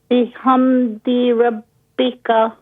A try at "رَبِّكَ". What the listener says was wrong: را کو فل ماؤتھ کیجیے ربک